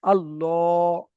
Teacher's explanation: পুর অর্থাৎ মুখ গোল করে পড়তে হবে, তাহলে আল্লাহ, মুখ গোল হবে, ল পড়তে হবে।